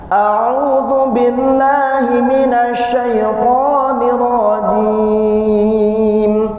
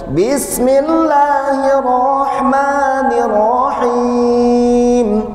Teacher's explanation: Ciri khas lagam ros, satu di ta'awudnya turun di akhir, kemudian naik di awal sampai akhir.